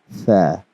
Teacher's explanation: Now with this haraf or alphabet, we have to make sure that the sound does not mix with seen. So seen has a whistling sound, but the tha, it is recited very softly. So we have to make sure that there's a very subtle difference between these two letters.